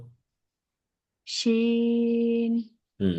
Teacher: তিন আলিফ টেনে পড়তে হবে, শাসা আওয়াজ হবে।